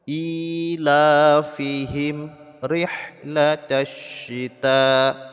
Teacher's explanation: Izhar itu artinya jelas, yang maksudnya adalah menjelaskan ataupun dibaca jelas mim sukunnya tanpa didengungkan, tanpa diikhfakan, dan tanpa diidghamkan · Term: izhar syafawi